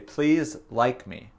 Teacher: Donc, il a sauté le S dans Thomas's et il a dit like me. Il a prononcé le I, le son I, trop long.